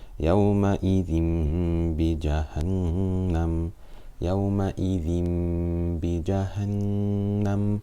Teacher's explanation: We do غنة for 2 harakat because there is a noon sakina or a tanween followed by a ba. So we do Iqlab.